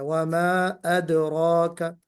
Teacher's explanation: دال تو باریک پڑھا جانے والا حرف ہے نا، یہ موٹا نہیں پڑھا جائے گا، وما ادراک۔